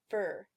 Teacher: So, eroticized schwa is the sound in fur. Notice how the R sound pretty much starts right after the consonant ends. So you can hear the schwa, you can hear the vowel, but the R is happening at the same time. The combination of the schwa and the R, the in fur, is represented using this IPA symbol. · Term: R-colored vowel